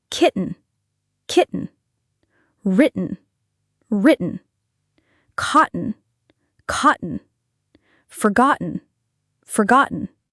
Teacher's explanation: It's easier to make that quick stop in your throat than to move your tongue to articulate a full T before the N.